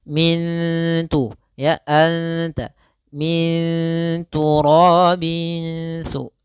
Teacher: Nah, ikhfa di sini huruf ta yaitu ikhfa akrab daripada huruf nun, sehingga kita namakan dengan ikhfa bagian lisan yang akrab dengan huruf nun. Maka cara membacanya yaitu suara nunnya disamarkan ke huruf ta. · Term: ikhfa hakiki